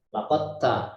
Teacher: Jadi tidak ditampakkan huruf dalnya. Huruf dalnya tidak ditampakkan, ya, seperti hilang sama sekali. Laqad ta, langsung masuk ke huruf ta. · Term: idgham